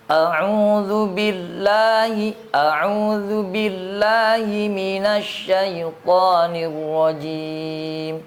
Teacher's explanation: karena dzal itu sifatnya istifal Tidak dimulai dengan moncong. Tipis dulu baru kemudian damahnya di memoncongkan.